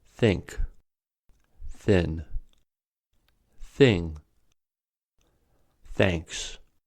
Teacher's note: The sound is made by lightly blowing out against teeth and the tongue thus being fricatives. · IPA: /θ/